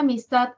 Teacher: Las otras 2 tienen menos en relación con ella. Tat es la sílaba tónica, tiene mayor intensidad que a y mis. Por lo tanto, a y mis son átonas.